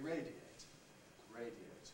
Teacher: to radiate on the other hand is not compressible it has to stay as three syllables because a at that point is strong